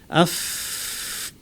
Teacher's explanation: ফায়ের আওয়াজ প্রচুর আওয়াজ, বাতাস থাকবে, ফ্যাস ফ্যাস আওয়াজ হবে। দেখেন আমার ঠোঁটটা, আফ, প্রচুর আওয়াজ থাকবে, বাতাস থাকবে, জোরেও কামড় দিব না আবার ফাঁকাও রাখবো না, টাচ করব কিন্তু জোরে চাপ দিব না।